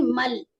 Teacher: میم لام میں ملائیں گے، ادغام کریں گے مل ہے نا، اور یہاں پر ادغام بلا غنہ ہوگا.